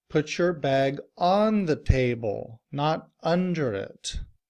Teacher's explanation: On and under are prepositions and as you saw earlier prepositions are function words and are generally unstressed. However, because I want to emphasize where to put the bag, I put stress on those function words.